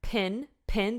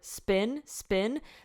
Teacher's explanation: with the word pin pin there's tons of air coming over with the word spin spin there is air coming out but a tiny bit less